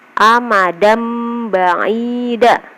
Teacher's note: Di situ ada fathatain bertemu dengan huruf ba. Jadi amadam ditambahin huruf M ya. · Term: iqlab